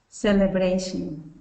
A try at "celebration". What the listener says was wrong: Okay, so I'm hearing that R kind of come up in bration. So let's do bray, bray. Okay, so let's kind of just say that bray sound. So say this for me. Bray, bray. Celebration. Celebration. Celebration.